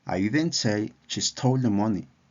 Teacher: Aquí la palabra stole lleva una entonación enfática. La voz se eleva ligeramente en esta palabra para enfatizarla y destacarla en la oración.